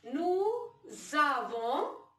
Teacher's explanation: S sound when goes to A, it changes to Z. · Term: liaison